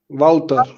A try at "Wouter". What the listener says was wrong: Well, that's not how I pronounce the W. For me, what you are saying is like a V.